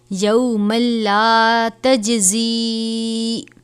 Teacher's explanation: جیم حروف قلقلہ میں سے ہے، ادا کرتے وقت آواز جنبش کی طرح ہونی چاہیے یعنی لوٹتی ہوئی محسوس ہو